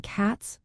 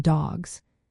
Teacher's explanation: the ending S sounds like S in cats but like Z in dogs. This change happens because of phonological rules about voicing.